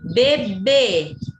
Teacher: a sílaba tônica é a última sílaba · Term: oxítona